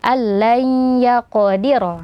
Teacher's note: Nah, idgham bi gunnah berarti dimasukkan disertai gunnah ya, seperti sebelumnya dibaca allan yaqdira ya, diidghamkan, masukkan nunnya ke ya, dan juga ada aliran suara yang mengalir dari rongga hidung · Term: idgham bhunah